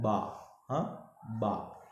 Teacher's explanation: دونوں ہونٹوں کی تر حصے ملانے سے ادا ہوتا ہے